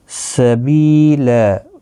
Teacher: بی یا مدہ ہے، ایک الف کی مقدار کے برابر کھینچ کر پڑھیں گے